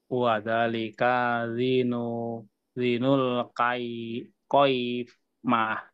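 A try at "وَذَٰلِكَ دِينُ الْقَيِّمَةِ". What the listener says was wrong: Ya, di-nya apa panjangkan Pak ya? Di-nya panjangkan di sini.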